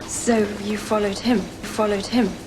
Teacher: instead of oh we have something like uh · vowel sounds that for me are diphthongs they get smoothed in the direction of being one single vowel quality so instead of i we have something like ah you want